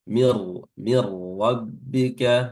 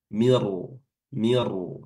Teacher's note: ra-nya dibaca tafkhim dibaca tebal